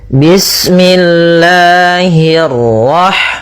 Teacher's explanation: Allah itu ada mad thabi'i pada lafal lanya. Nah, di sini kita panjangkan dua harakat.